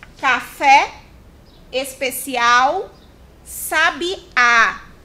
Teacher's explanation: Oxítonos. O acento tônico recai, ou seja, cai na última sílaba.